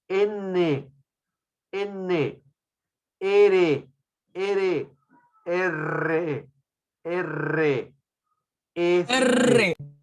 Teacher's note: el ápice de la lengua va hacia la zona alveolar lo presiona o lo rosa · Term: consonante alveolar